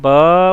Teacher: جب ہم با بول رہے ہیں تو یہ با کو لمبا کیا جا رہا ہے، نہ کہ الف کا کوئی ساؤنڈ ہے الگ سے